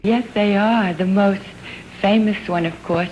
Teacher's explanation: listen to the tiny little sort of catch breath right after the word most